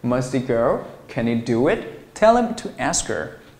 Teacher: H▁不发音，直接啊，让这个辅音音标结尾的单词跟▁H▁开头这个单词后面的元音进行连读啊